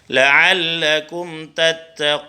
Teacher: Qun, mad arid lis sukun, ya. Panjangnya boleh 2 harokat, boleh 4 harokat, boleh 6 harokat.